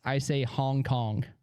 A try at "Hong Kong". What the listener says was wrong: It does sound like a K, dude.